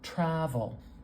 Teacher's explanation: This vowel is a little stretched out. This tra part is kind of loud. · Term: stress